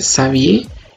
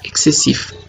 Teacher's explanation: X, que es la letra X en español, tiene dos formas de pronunciar, como S en el nombre Xavier y como KS en la palabra excessif